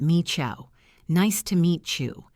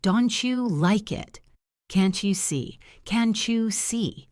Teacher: The two sounds crash into each other and create a new sound, so T plus Y becomes CH and D plus Y becomes J. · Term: palatalization